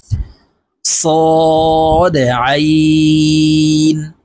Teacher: আমরা হামজার উচ্চারণ করে থাকি হলকের শুরু থেকে উচ্চারণ করে থাকি তো আইনের উচ্চারণ হবে হলকের মধ্যখান থেকে চাপ দিয়ে উচ্চারণ করতে হবে